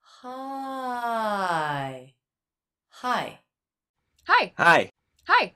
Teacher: both words hi hi hi had that up down shape